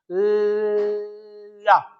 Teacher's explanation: जब हम ला वर्ण का उच्चारण करते हैं, ला वर्ण का उच्चारण करते हैं, तो जीभ हमारी तालू पे जाके टंग जाती है और वो हवा को रोक लेती है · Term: पार्श्विक